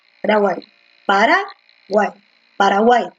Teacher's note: En guay es que se asienta bonito y efectivamente nos da el sonido correcto. La fuerza de voz está en guay. Entonces, como está en la última, esta es una aguda.